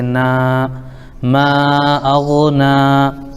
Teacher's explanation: نون پر کھڑا زبر الف مدہ کے برابر ایک الف کھینچیں گے